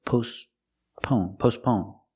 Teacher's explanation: We see with postpone, the T is silent. You don't hear it because it's between consonants. It's not postpone, it's postpone.